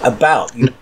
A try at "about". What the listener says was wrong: You say a boot.